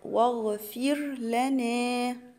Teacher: هنا الراء بتاع كلمة واغفر هنا هتبقى مرققة، ليه؟ لأن هي ساكنة وما قبلها مكسور. · الألف اللي ما بينهم دي اسمها همزة وصل ساقط، يعني هي في وسط الكلام كده أنا مش هقولها